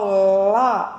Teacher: Para falar lá, a minha língua vai tocar atrás dos dentes superiores, centrais, depois vai cair